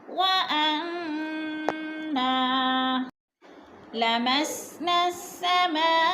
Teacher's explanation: मद मुत्तसिल, 4 अल्फी मद 4 के बराबर खींच कर पढ़ना है इसको